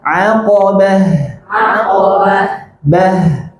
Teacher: ta marbutah ketika berhenti Jadi huruf H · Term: tak marbutah